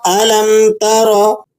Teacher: تا مفتوح ہے اور را بھی مفتوح ہے، را مفتوح کو آپ نے موٹا بھی پڑھنا ہے